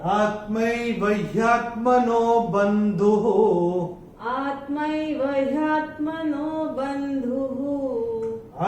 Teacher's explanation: ये जो विसर्ग आ रहा है चरण की समाप्ति पे आ रहा है, तो इसका उच्चारण भी ह ही होगा, क्योंकि चरण की समाप्ति पे आ रहा है।